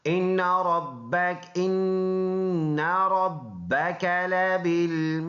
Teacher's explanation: دال میں قلقلہ کریں گے جب وقف کریں گے